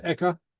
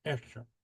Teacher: There's a little hiatus, a lift and a hiatus there.